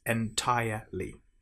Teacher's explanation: make sure you don't pronounce the R in entire